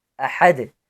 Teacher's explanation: Both hamza and ha have fatha above them. They are among the 6 throat letters, so they should be pronounced from the throat. अहद, दाल साकिन पर कलकला करेंगे।